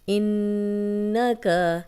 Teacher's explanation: نون پہ شد ہے تو غنہ کریں گے، غنہ ناک میں تھوڑی دیر آواز کے ٹھہرانے کو کہتے ہیں۔